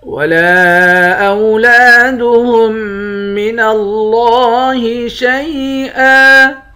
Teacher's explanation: لفظ اللہ کے لام کو موٹا بھی پڑھیں گے